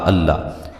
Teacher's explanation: لفظ اللہ کو اسم جلالہ ہے، اس کو موٹا کر کے ادا کرنا ہے